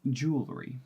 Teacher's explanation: that's a w LR Y sound that's a tight consonant cluster